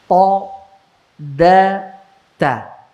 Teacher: Bukan taraf, tapi dari pangkal gigi seri atas. Ujung lidah dengan pangkal gigi seri atas.